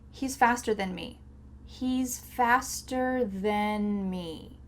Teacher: Sometimes when native speakers are speaking quickly, the word than sounds like then.